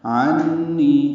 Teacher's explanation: عنی عین وسط حلق سے ادا کریں گے، نون مشدد پہ غنہ ہے اور نی یا مدہ ہے، 2 حرکات لمبا ہے